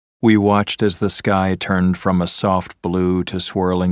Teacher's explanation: you probably found it boring to listen to because it was spoken in a monotone